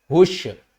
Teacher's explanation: شین کے اوپر تشدید ہے، سختی بھی کریں گے اور ہا کو شین کے ساتھ بھی ملائیں گے